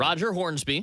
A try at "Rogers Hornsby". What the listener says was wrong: Rogers Hornsby. Don't forget the S. It's not Roger. Rogers Hornsby.